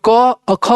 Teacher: क और ख बोल रहे हो तो उसको कंपन नहीं हो रहा है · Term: अघोष